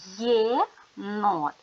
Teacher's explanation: приголосні звуки н твердий Т твердий повертаємося до початку слова єнот крім звуку е ми ще чуємо один звук й м'який приголосний звук є дивимося де стоїть буква є буква є стоїть на початку